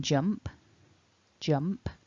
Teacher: the base form of this verb ends in the P, the P sound, which is not a voiced sound